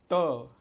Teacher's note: त हा दात आणि टाळूच्या मध्ये स्पर्श करतो म्हणून दंत तालव्य